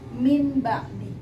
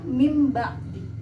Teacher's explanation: Jadi iqlab adalah jika nun mati ketemu dengan huruf ba, maka nun matinya diganti menjadi mim mati